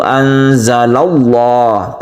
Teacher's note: yang didahului oleh 'fathah', disebut ' lafzul jalalah tafkhim' atau dibaca tebal , karena ada 'fathah' di depannya , sehingga dibaca "Anzalallah" tebal, nama Allah itu tebal, oleh karena itu disebut 'tafkhim'. · Lafaz Allahnya itu tebal maka disebut dengan tafkhim